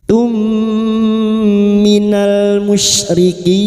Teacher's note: mim sukun bertemu mim idgham mimi, memasukkan atau mentasdidkan 2 mim masuk pada huruf mim berikutnya disertai mendengung selama 3 harokat